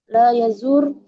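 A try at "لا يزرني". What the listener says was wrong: La yazur wawunya ngilang. Roknya sukun.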